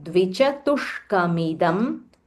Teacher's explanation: There is a half murdanya sh